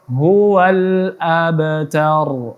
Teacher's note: huruf ba ialah huruf qalqalah, maka dipantulkan.